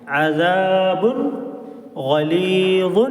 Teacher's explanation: تنوین کے بعد غین آ گیا، اس لیے ہم نون کی آواز کو ظاہر کریں گے